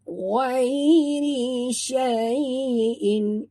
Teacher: Ra tarkik, ra baris bawah tipis. Dan ya sifatnya lin, jadi bila kita sebut ni kita macam tersenyum